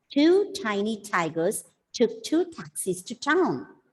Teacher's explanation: every word begins with a plosive.